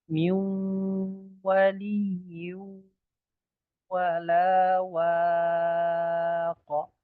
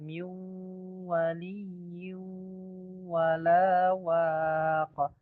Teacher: Ya, miu waliyu wala waqa. Nun sukun bertemu wa, ya, itu idgham, tetapi tidak ada tasydidnya, maka ini namanya idgham naqis. Juga waliyu itu tanwin bertemu waw, ya, tidak ada tasydidnya di huruf wa-nya, maka ini namanya idgham naqis.